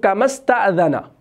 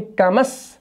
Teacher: استفعال کا پہلا والا حمزہ جو ہے یہ حمزۃ الوصل کہلاتا ہے. وصل کی صورت میں یہ ڈراپ ہو جاتا ہے